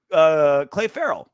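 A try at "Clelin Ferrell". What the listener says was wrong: why do you keep calling him Clay Farrell? It's not Clay. It's Clee.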